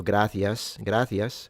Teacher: I I imagine I sound Italian when I speak Spanish, but in general, uh I would say the kind of Spanish we learn back in Italy would be castian of the Madrid variety. So I do use the th sound, the inter dental